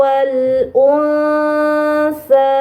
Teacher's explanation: terakhir di sini ada huruf nun sukun bertemu dengan huruf t ini namanya ikhfa Hakiki maka Nun sukunnya harus dibaca samar